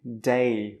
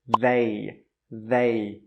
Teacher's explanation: the first word was day, day with a D. The second word was they with a voiced TH sound.